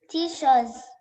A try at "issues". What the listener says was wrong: No, not tissues. Issues. Letter I. Start with letter I. E. Shoes. Issues. Issues.